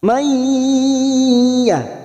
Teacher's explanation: Wa man, nun sukun bertemu ya, nun sukun atau tanwin yang bertemu dengan empat huruf ini, ya, nun, mim, waw, termasuk nun sukun bertemu ya ini namanya bacaan idgham bi gunnah, masuk dan mendengung, masuk pada huruf ya dan ditahan selama 3 harokat